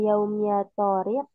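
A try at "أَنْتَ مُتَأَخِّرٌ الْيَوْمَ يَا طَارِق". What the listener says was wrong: Nah, kalau itu nadanya nada bertanya dia. Ya Torik, tapi nggak begitu, dia nggak bertanya. Anta mutaakhirun al-yaum, ya Torik. Ya Torik itu bertanya. Nadanya.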